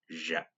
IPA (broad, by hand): dʒ